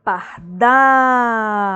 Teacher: Última sílaba tônica, oxítona.